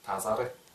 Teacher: Слово «тас», что значит голое, ары, пчела. Глухая «с» между двумя гласными в быстрой речи переходит в букву «з». Тувинскую букву «з».